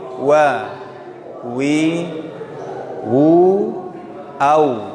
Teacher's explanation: Huruf waw keluarnya dari dua bibir